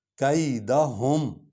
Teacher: کیدہم، ہم نہیں پڑھنا، یہ جو ہا ہے یہ مطلب اس کو سینے سے نکالنا ہے، سینے کی ہڈی سے